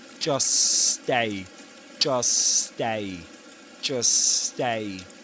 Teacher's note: by not producing not pronouncing the T sound in the middle of these words in between these two words is to produce only one S sound, one S sound, a long S sound